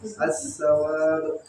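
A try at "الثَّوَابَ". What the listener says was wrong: pakai ta. Ats-tsawab.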